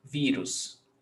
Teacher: Vírus, paroxítona, stressed syllable before last